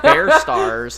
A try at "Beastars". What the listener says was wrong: There's literally no R in that.